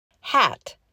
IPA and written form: hæt (HAT)